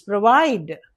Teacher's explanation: the stress is on the second syllable because we are not giving any stress to this O.